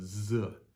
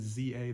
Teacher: way it is in English where we go Z right here it's staccato like a DZ so it's with this Za the best way I can describe